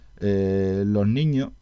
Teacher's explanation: Un tercer fenómeno típicamente andaluz es la eliminación de la S final de palabra, o en su caso la aspiración, se queda un pequeño sonido aspirado